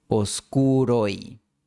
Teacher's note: La E es breve y forma diptongo con O. Oscuro se une con I formando un diptongo oi. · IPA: [os'ku.ɾoj]